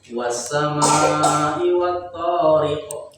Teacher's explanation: Tariq, jangan tariq tapi qa, tebalkan.